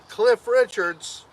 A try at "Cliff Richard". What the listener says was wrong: Richard. No S.